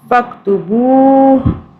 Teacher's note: واو کی وجہ سے ہم اسے ایک الف کے برابر کھینچیں گے · ہا کو ہم ساکن کر دیں گے کیونکہ ہم یہاں رک رہے ہیں، نہیں رکیں گے تو ہو پڑھیں گے